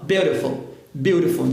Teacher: é a língua batendo rapidamente no céu da boca e soltando